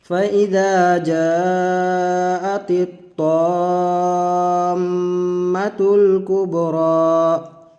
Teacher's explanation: ये मद्दे लाजिम की मिसाल है। तो मद्द लाजिम को हमको 3 अलिफ 4 अलिफ 5 अलिफ तक खींच करके लंबा करके पढ़ना होगा